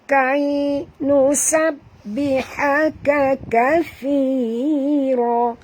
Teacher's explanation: Ni huruf kaf ya, tuan-tuan dan puan jangan tebal.